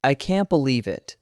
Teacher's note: The second time there was emotion. The voice slowed down, the pitch dropped.